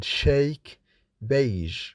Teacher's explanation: Fricative consonants are formed by a narrowing of the air passage, then the air escapes, making a kind of hissing sound with an audible friction. The blade of the tongue contacts the palato-alveolar slightly. The soft palate is raised.